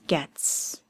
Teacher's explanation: It ends with the sound s sound with the letter t. That t sound is a voiceless sound t. So it becomes gets.